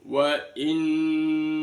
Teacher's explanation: wain nun tasid dibaca ghunah mendengung